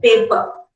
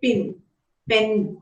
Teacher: in general indian english these plosives are not aspirated